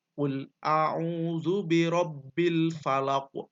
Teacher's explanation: Qafnya harus memantul secara alami, tidak seakan-akan setelah qaf ini ada hamzah ya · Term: qalqalah kubro